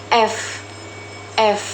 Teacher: Huruf F dibentuk dengan menggunakan bibir bawah dan gigi atas serta menghasilkan suara yang saling bergesekan. atau disebut frikatif abiodertal.